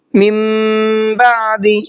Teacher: من بعد، یہاں پر دیکھیے نون ساکن کے بعد میں با ہے اور ہم نے قاعدہ پڑھا تھا، روزانہ یہ قاعدہ آپ کے سامنے آ بھی رہا ہے کہ اگر نون ساکن کے بعد میں با آتا ہے تو وہاں اس کے اوپر ایک چھوٹا سا میم بنا ہوا ہوتا ہے تو وہ میم پڑھا جاتا ہے، نون نہیں پڑھا جاتا ہے، اور غنہ بھی ہوتا ہے ساتھ میں